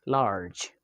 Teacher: Well, according to places of articulations, the J sound is post-alveolar sound, and according to manner of articulations, the J is affricate. The J sound is voiced. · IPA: /dʒ/